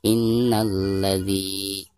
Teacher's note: Nun yang bertasydid merupakan huruf ghunnah cara membacanya harus ditekankan disertai dengan guna